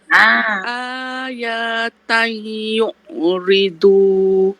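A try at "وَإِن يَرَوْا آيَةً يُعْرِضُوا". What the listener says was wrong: Ya tak panjang. Ayatan yu'ridu. Berhenti kat situ. Ya tu satu.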